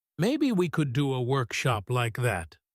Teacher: She doesn't pause after workshop. She rushes to the end of the sentence to share the idea.